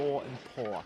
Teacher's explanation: So door, for me as a Scottish person or a northern accent, door and poor don't rhyme. However, a posh English accent, or what we consider what we call received pronunciation, would rhyme.